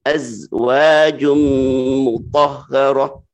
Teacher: za ini termasuk rokhawah. Ya, dia lembut dan punya sifat sofir.